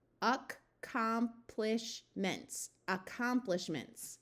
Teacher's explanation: the A schwa, where it takes on a muffled short U sound. So rather than being a clear ack sound, this is much more likely to be more like uck.